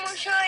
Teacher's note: la fricativización de che que se realiza como she